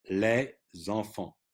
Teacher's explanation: the S is not pronounced when you just say les, but when it's followed by a vowel, you link it. And we link much more in French than we do in English, and that's a way to do it. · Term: liaison